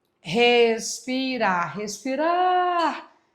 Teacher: a mais forte é a última, oxítona